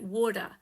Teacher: in American pronunciation, often T is pronounced as a D